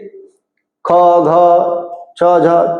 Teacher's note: महाप्राण जिनके उच्चारण में मुख से अधिक हवा निकलती है और ह जैसी ध्वनि